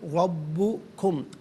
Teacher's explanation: रा पर ज़बर है, रा को पुर करके पढ़ेंगे